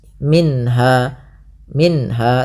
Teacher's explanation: ada bacaan izhar halqi, yaitu suara nunnya dibaca dengan jelas